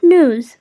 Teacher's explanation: the stress is on the first syllable, that is noo. And then we just have to end it with a z sound. So it's pronounced as Noo-z.